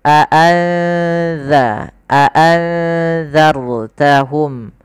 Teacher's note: nun mati ketemu dalal yaitu ikhfa samarkan nunnya kepada huruf dalalnya